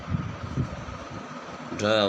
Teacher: ढ वो मूर्धन्य वर्ण है। ढ का उच्चारण स्थान मूर्धा से होता है, ये मूर्धन्य वर्ण कहलाता है।